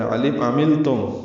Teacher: عین وسط حلق سے ادا کریں گے، لام ساکن پہ اظہار ہے.